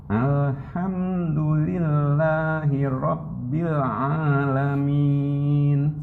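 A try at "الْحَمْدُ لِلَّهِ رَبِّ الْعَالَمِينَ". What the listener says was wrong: Ya, tinggal yang harus dilatih adalah huruf ainnya. Huruf ain ini lama. Karena huruf ain kalau kita biasakan masukkan ke dalam tenggorokan yang seharusnya dia keluar itu yang paling lama Pak.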